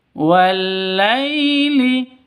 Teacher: Lai sifat lin, lentur, lemes, tidak boleh disentak, tidak boleh didengungkan ataupun dipanjangkan. Lai wal-laili itu salah.